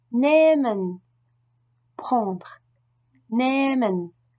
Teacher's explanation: Après une voyelle, par contre, le H ne se prononce pas, mais il allonge automatiquement cette voyelle.